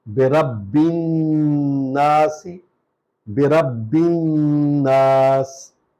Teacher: سین کو سیٹی کی آواز نکلنی ہے اور اس میں ہم رک بھی سکتے ہیں